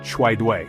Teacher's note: Chwai dui means help, and is pronounced chwai dui, with the emphasis on the second syllable of each word.